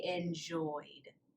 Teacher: It ends in a voiced sound, so we would say enjoyed.